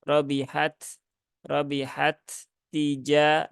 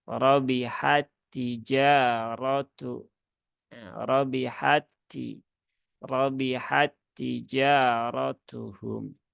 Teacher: huruf yang pertama Anggap saja hilang ya melebur sepenuhnya ke huruf yang kedua maka sifat hams dari ta yang pertama itu tidak dipakai lagi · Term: idgham Kamil